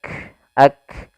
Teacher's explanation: Syiddahnya harus tampakkan dulu baru hamznya, tidak bisa bersamaan.